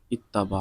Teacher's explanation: دونوں ہم جنس ہیں اور پہلا ساکن ہے دوسرا متحرک ہے. یہاں ادغام کی شرط پائی گئی، تا کا تا میں ادغام کر دیا